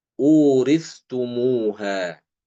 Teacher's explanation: Imam Ibnu Zakwan itu bacanya sama seperti Hafiz, dia dengan mengizharkan sa.